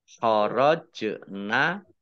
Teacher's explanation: Fa'in kharajna, nun sukun bertemu dengan huruf khaf dibaca bacaan idhar dibaca jelas. Kemudian jim sukun bacaan qalqalah dibaca memantul, ditampakkan pantulannya